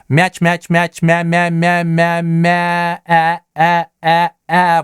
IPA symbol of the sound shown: æ